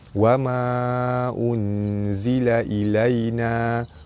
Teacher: Nun mati bertemu dengan zai, hukum dia ikhfa hakiki, dibaca dengan samar-samar nipis serta dengung 2 harakat.